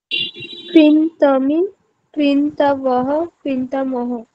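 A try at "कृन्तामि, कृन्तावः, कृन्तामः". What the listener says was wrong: ঠিক।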